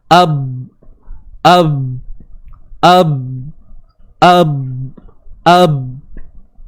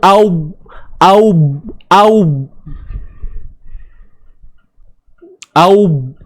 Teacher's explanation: Bagi menghasilkan bunyi ba tu dengan tertutupnya dua bibir mulut kita. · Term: makhraj huruf ba